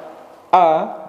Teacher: tertahannya nafas pada waktu melafalkan a tidak ada hembusan udara sedikitpun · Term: Hamzah